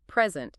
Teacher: If we stress the first syllable, present, it's a noun, meaning a gift